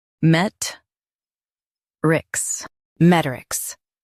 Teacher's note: Stress met and keep rics light.